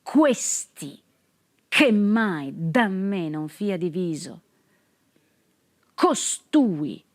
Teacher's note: Infatti non a caso Francesca usa dei suoni della lingua italiana perfetti per raccontare questa voglia di distacco, e che è il suono, la combinazione sonora tra k e t, k gutturale e t dentale, i denti che tagliano.